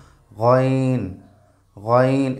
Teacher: গইন হরফটি কণ্ঠনালীর একদম শেষ থেকে এটা আদায় হয়